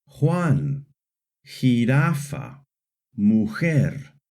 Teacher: letter J in Spanish always makes a strong H sound